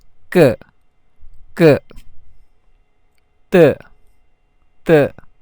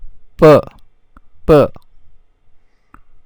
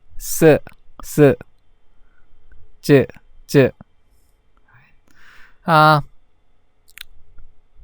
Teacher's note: How do you pronounce tense consonants? You say it with a higher pitch.